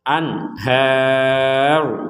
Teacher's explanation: itu Min tahtihal Anhar di sini ada nun sukun bertemu ha nun sukun bertemu ha ini kita membacanya dengan jelas